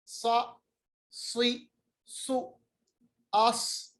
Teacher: साद को पढ़ते वक्त होंठों को गोल करेंगे